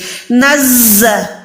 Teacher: زا میں وسل ساؤنڈ یعنی یہ والی آواز آئے گی ، تو یہاں پر اس کو شارپ ادا کرے، تیز حروف